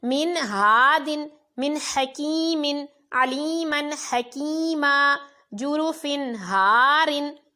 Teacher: نون ساکن کی آواز میں اور تنوین کی آواز میں آپ نے غنہ نہیں کرنا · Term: اظہار